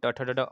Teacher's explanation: लेकिन ट, ठ, ड, ढ, अड़ जो होता है मूर्धन्य होता है, याद रखेंगे साथी। जीभ को मोड़कर बोला जाता है